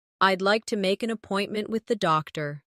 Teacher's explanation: Keep the stress on appointment, so the listener understands the purpose.